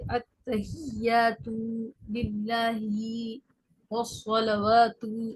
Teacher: ہر جگہ ہمیں مقدار سے زیادہ کھینچنے کی آواز آ رہی تھی